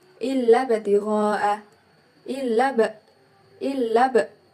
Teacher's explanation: di situ terdapat ba mati di tengah-tengah bacaan, maka disebut dengan qalqalah sugro dan kita membacanya harus terang dan memantul